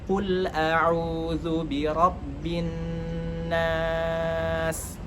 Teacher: huruf qaf yang memiliki sifat isti'la atau sifat tebal